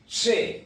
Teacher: Le son SH n'existe pas en espagnol. Ça sera toujours avec un T. Che, c'est plus fort.